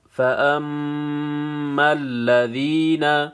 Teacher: متشابہات ہن ام الکتاب وَأُخَرُ متشابہات، فَأَمَّا الَّذِينَ، یہاں پہ بھی میم مشدد ہے، یہاں پہ غنہ ہوگا، فَأَمَّا الَّذِينَ، یا ساکن پہلے زیر ہے، یا مدہ ہے، ایک الف کے مقدار کھینچنا ہے۔